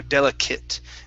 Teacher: the ATE, okay, that's going to be a short I and a T